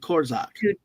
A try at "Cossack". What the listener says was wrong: No, there's no core.